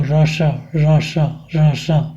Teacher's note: यहाँ भी हम यदि मूर्धन्य सा का उच्चारण करना चाहें तो रस रस रस इस प्रकार से उच्चारण करके अपनी वाणी को शुद्ध कर सकते हैं। दंत और तालु के मध्य के भाग को वायु स्पर्श करती है इनका उच्चारण करते समय।